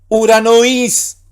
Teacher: Omicron Y es una sola vocal, un solo sonido vocálico que es U, no es O, sino U.